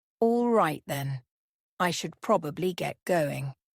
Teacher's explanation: Probably softens it, making it sound less like a demand and more like a necessity. Notice the casual falling intonation.